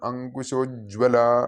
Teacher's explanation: അങ്കുശം കായാണ് അവിടെ, ഗായല്ല